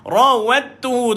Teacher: Dal ini telah dimasukkan ke dalam ta. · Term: idgham